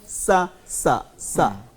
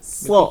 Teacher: جب سین بولنا ہے تو زبان کے پچھلے حصے کو نیچے رکھنا ہے سا, ٹھیک. اور جب ہم نے صاد بولنا ہے تو زبان کے پچھلے حصے کو اوپر اٹھانا ہے